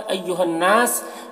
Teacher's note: अय्युहन्नास, हा को नून से मिलाकर पढ़ेंगे, तो ये अलिफ नहीं पढ़ा जाएगा, ठीक है। नून मुशद्दद गुन्ना होगा, और अलिफ मद्दा है, तो इसे एक अलिफ के बराबर खींचेंगे।